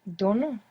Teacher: the accent in the present tense is going on the penultimate syllable the second last syllable